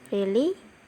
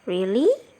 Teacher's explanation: Variasi intonasinya adalah datar, yaitu really. Jika dia menaikkan intonasinya, maka akan terdengar really.